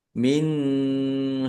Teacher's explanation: nun sukun bertemu dengan huruf syin bacaan ikhfa dibaca samar-samar